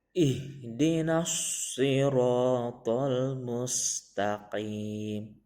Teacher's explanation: Huruf sod ada sedikit bibirnya dimajukan tapi sedikit sekali